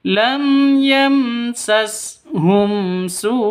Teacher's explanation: mim mati bertemu dengan sin, jelas terang, tidak boleh didengungkan, tidak boleh disentak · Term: Izhar safawi